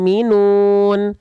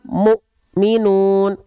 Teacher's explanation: syiddah pada huruf hamzah sukun itu ya akan membuat huruf yang bertemu dengannya itu terhenti bahkan ada yang bilang terhentak nah sama kalau teman-teman lafalkan pantulan